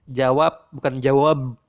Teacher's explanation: Ini butuh dengungan dan ini tidak butuh dengungan. Ketika B ada di akhir kata, maka B itu ditutup dan tidak membutuhkan sebuah dengungan. Maka bunyinya akan menyerupai bunyi P tertutup seperti halnya ini.